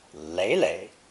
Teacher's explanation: pronounced third tone, and doubled in the phrase lei lei